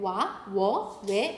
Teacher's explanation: W의 반모음은 오나 우기 때문에 와, 워, 왜 이런 식으로 우 했다가 벌어져야 돼요.